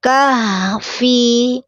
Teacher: menggunakan ha besar tenggorokan bawah mengalir suaranya kahfi tidak boleh memantul kahfi ataupun terputus kah fi karena dia rakwa mengalir suaranya sampai ke huruf berikutnya.